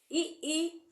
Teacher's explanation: इ इ ये तालू द्वारा बोले जाते हैं